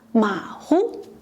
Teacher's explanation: 马 is in the third tone and 虎 in the neutral tone.